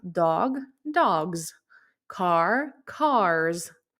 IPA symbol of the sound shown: z